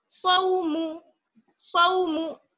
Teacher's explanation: स्वाद को मोटा, वाव को बारीक, और मीम को भी बारीक